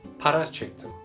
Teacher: -di suffix turned to -ti due to k at the end of the verb. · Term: consonant harmony